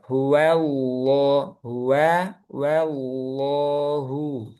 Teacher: Hakat sebelumnya di sini fathah. Nah, kalau harakat sebelumnya fathah, maka dia tebal lamnya.